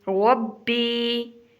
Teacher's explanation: را کو پر کر کے پڑھنا ہے اور با کے اوپر شاد ہے تو با کو تھوڑا سا سختی سے ادا کریں گے، ربی۔ آگے یا ہے تو اس کو تھوڑا سا لمبا کریں گے، ربی۔